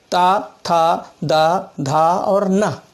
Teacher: जीभ का दांत से जब टच होता है तो ता वर्ग निकलता है